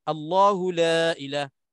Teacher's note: Lam lafzul jalalah pada lafaz Allah itu hukumnya tebal ataupun tafkhim.